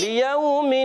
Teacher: لام کے نیچے زیر ہے، لام کو کھینچنا نہیں ہے